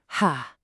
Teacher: To say this one, I want you to imagine you're fogging up a mirror on a cold day. It's this deep, breathy push of air from your throat.